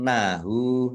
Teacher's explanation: nun tasdid bacaan hunnah atau mendengung ditahan biar tampak mendengungnya